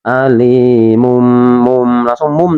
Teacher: Jadi merubah bacaan huruf, jadi membalik ya bacaan dari huruf tanwin atau nun sukun menjadi huruf mim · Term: bacaan iqlab